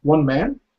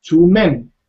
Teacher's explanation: man is prolonged, men is shortened. Yeah, the vowel is shortened.